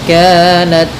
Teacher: dalam ta sedikit dikasih hamas karena sifat ta ketika sukun itu tampak hamasnya